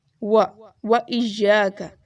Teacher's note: و اس کو ہونٹوں کو گول کر کے پڑھنا ہے